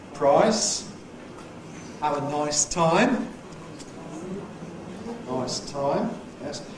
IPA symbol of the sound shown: aɪ